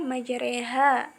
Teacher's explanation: tetapi dibaca majriha, miring, suara fathahnya miring ke arah kasroh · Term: imalah sugro